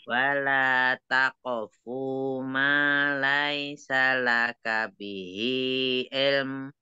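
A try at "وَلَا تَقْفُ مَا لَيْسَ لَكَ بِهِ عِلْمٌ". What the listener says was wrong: Takofunya pendek aja, wala takofu mah laisa, jangan laisa, lai.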